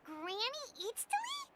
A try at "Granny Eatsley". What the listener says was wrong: But emphasis on Eatsley, not Granny.